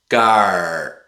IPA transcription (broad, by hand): ʔ